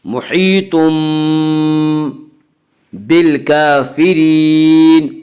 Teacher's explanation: اس کا قاعدہ یہ ہے کہ نون ساکن یا تنوین کے بعد اگر بائے تو وہاں پہ قلب ہوگا، یعنی نون ساکن اور تنوین کو میم سے بدل کر غنہ کے ساتھ پڑھیں گے